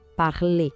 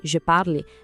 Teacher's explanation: O infinitivo parler tem um som de E bem fechado no final, escuta só, parler. Já no presente, je parle, essa terminação E é muda. O som morre no L, parle.